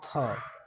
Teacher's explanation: हिंदी की स्पर्श घोष महाप्राण दंत व्यंजन ध्वनि है